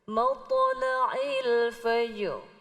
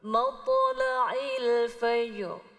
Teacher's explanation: Berat. Pantulannya berat. Kalau kata para ulama tajwid, ujung lidah kita sampai terangkat ke langit-langit. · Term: isti'ala